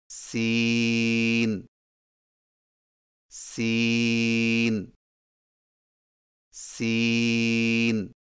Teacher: سین کی ادائیگی میں زبان کی نوک کو سامنے والے نیچے کے دو دانتوں کے کناروں سے مضبوطی سے لگا کر باریک اور سیٹی جیسی آواز میں پڑھیں